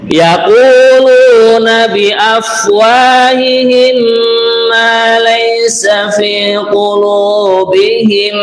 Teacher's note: Nah, mim mati berjumpa dengan mim. kita mendengungkan nggih. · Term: idgham mimi